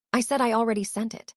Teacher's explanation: You stressed I and already without meaning to. Those stress points added emotion you didn't intend.